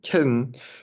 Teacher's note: for kitten you don't even touch your tongue tip to your teeth